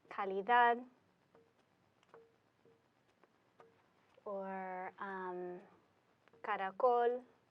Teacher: emphasis is going to go on the last syllable